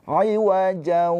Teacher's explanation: Ditahan dua harakat dengan suara keluar dari hidung. Jau jau tuh kalau dipencet hidungnya itu bunyi iwajau. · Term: idgham bighunah